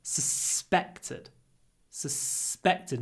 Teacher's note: Because the second syllable is stressed. So we need a long s.